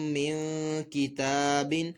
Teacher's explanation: نون ساکن میں اقفا کا قاعدہ ہوگا، غنہ بھی کیا جائے گا